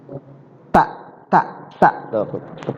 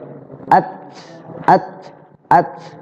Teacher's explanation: dia kalau seandainya terbaca sukun, hamasnya nampak jelas. Keluar hamas, ya, napasnya kelihatan. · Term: huruf hamas